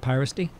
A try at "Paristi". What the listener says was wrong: I wouldn't go pie. Paristi.